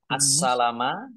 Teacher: ada alif lam syamsiah karena tidak dibaca langsung masuk ke huruf berikutnya yaitu Sin ditandai sinnya ada tasdidnya sinnya dibaca dobel ada tanda lam alif